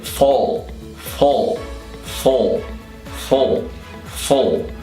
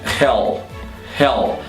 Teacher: Segura um pouco o L, ele é mais cheio e não som de U, não tem L's com som de U em inglês. · Então, hell, hell. Esse L é o dark L que você precisa fazer no final da palavra.